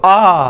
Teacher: जब आप आ मतलब बड़ा आ बोलते हो, आ, तो पूरा मुंह खुलता है आपका। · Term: विवृत